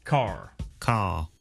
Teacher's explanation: in car, the vowel sound is lengthened in place of the R sound. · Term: non-rodic